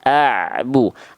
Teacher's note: Harus ngalir sedikit a bu. Antara bunyi ain sukun dengan bu tidak ada jarak.